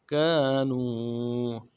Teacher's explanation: کاف کے بعد الف مدہ ہے، ایک الف دان میں کھینچیں گے۔ نون کو واو کے ساتھ ملانا ہے، واو مدہ، نون ساکن سے پہلے واو مدہ کہلاتا ہے، ایک الف دان میں کھینچیں گے۔